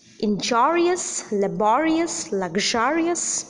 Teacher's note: these words are also accented on the syllable preceding the suffix